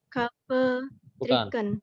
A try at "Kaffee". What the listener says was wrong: Bukan kafe. Ingat E-nya double berarti panjang. Kafe. Kalau kafe nggak bisa. Kafe